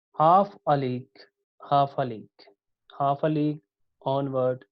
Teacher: Dactylic poem, 1 stressed plus 2 unstressed, जिसमें first 1 stressed होता है और जो दोनों नेक्स्ट 1 सिलेबल होते हैं वो अनस्ट्रेस्ड होते हैं, ठीक है।